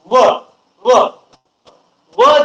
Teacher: दंत प्लस ओठाचा तुम्हाला वापर करावा लागतो. त्यामुळं याला त्या भागावरून दंतोष्ठ, दंतोष्ठ असं नाव देण्यात आलेलं आहे.